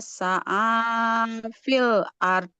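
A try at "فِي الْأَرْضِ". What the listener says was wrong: Oke, nah huruf dalnya nggak boleh mengalirkan nafas, nggak boleh fil ard.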